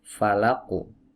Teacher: karena huruf qaf ini adalah huruf tebal yang memiliki sifat isti'la, maka pantulannya pun harus tebal. Falaqu, bukan falaq, jangan ditipis, tapi ditebalkan. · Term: qalqalah